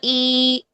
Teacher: اب یا مدہ کے قائم مقام کیسے ہوتی ہے کہ کھڑی زیر کی آواز کیسی ہوگی، زیر کی آواز ہوتی ہے ای، ٹھیک ہے، ای کی آواز ہوتی ہے زیر کی۔ اب اسی زیر کو اگر ہم 2 کاؤنٹس کے لیے لمبا کر دیں، ٹھیک ہے، 2 حرکات لمبا کر دیں، تو وہ بن جائے گا ای۔